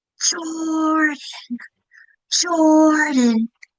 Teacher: my first syllable is a little louder than the rest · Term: accent